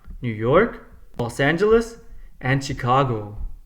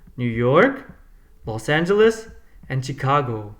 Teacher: the last item has rising and falling intonation so it goes up and then down